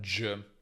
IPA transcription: dʒ